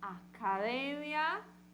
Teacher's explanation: E quem é a sílaba forte no espanhol? Uma paroxítona, que é a penúltima sílaba, academia.